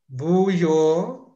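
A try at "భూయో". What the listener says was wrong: Okay, so I have also need to put the H sound. It's bhu.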